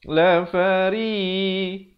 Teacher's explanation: ri di sini ra dibaca nipis berbaris bawah.